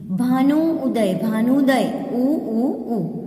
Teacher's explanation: भानु उदय, भानुदय उ उ उ। दो जो छोटा ऊ है लघु ऊ है वह दोनों मिलने पर ऊ दीर्घ ऊ हो जाता है